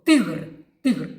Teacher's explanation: Ви чуєте ти звучить дуже твердо